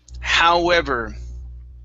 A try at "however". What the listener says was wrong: Okay, so give me a good V here. So however.